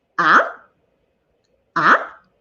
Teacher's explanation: the second tone we also call it the rising tone it goes like ah ah like you were expressing your surprise